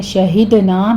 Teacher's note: شہدنا میں دال پر قلقلہ کریں گے اور آگے الف مدہ پورا ادا کرنا ہے 2 حرکتوں برابر.